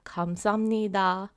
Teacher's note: But when I say it a bit faster, 감사합니다, you can hear when the piep meets the nian, it's less of a BP and more of an M sound.